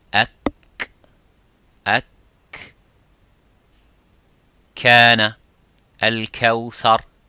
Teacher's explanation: the kaf touches the roof of the mouth, a little bit touches the bone of the roof of the mouth, which is further towards the tongue, towards the lips, I'm sorry.